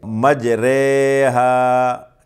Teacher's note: را کے نیچے کھڑی زیر ہے، اس پر امالہ ہوتا ہے، اور اس را کو پڑھتے ہیں مجہول اور باریک پڑھیں گے